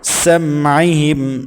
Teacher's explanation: سین سیٹی والے حروف میں سے سختی کے ساتھ ادا کریں گے. میم ساکن کے بعد عین ہے تو اظہار کریں گے.